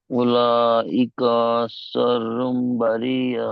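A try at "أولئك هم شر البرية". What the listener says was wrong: হলো না, হুম ছেড়ে গেল, আপনার ঘুম এসে গেছে মনে হয়।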